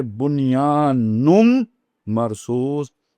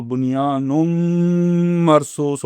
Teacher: جو دوسرا نون تھا، پہلا نون نہیں، جو دوسرا نون تھا وہ میم میں بدل گیا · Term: ادغام